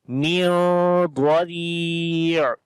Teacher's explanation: we make ikhfa sound here, the hiding sound of noon now